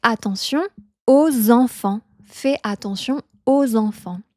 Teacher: Et ici, on n'oublie pas de faire la liaison aux enfants.